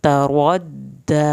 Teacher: را کو پر کر کے موٹا پڑا جائے گا، دال کی شد ادا کی جائے گی